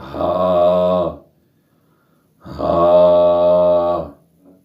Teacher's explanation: ہونٹوں سے ادا کریں گے دونوں ہونٹ جوڑ کے، میم، نون، نون، واو، واو، ہونٹ گول کریں گے، واو۔ ہا انتہائی حلق سے آخری حلق کے حصے سے ادا ہوگا